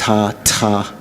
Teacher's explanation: The TH in Tera doesn't symbolize two consonants. It's one consonant, an aspirated T. · there's more aspiration, more breath come out